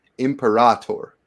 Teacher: the stress is on the penultimate syllable